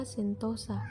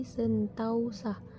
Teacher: Perubahan diftongisasi terjadi pada vokal tunggal o ke vokal rangkap au